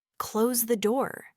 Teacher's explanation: close the door, a clear command, also uses a falling tone. When you hear a falling intonation, it's generally a signal that the speaker has finished their thought or is providing clear, definitive information.